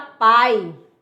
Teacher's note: Vogal é o A e o I é semivogal porque ele é com menos intensidade.